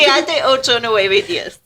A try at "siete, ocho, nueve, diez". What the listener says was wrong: Was that counting? Oh, that sounded like one word.